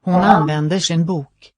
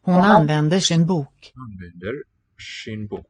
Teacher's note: we have that retroflexion happening when final R meets an S. It's not a sub sh, persevering with that retroflex quality, or something, some effect of the R.